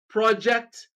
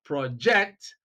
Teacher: we have stress on the first syllable in the word project when we use it as a noun. But then we have stress on the second syllable of the same word when we use it as a verb and we pronounce it as project. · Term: shifting stress